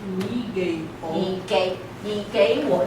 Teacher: Now, when you have two third tones, what happens? It becomes second tone.